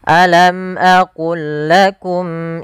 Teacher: Maka ini kita namakan, yang kami belum tuliskan di sini, ini kita namakan dengan idgham idgham mutamasilain, yaitu huruf-hurufnya sama dari makhraj dan sifatnya, yaitu cara membacanya memasukkan langsung lam yang pertama kepada lam yang kedua tanpa ditahan.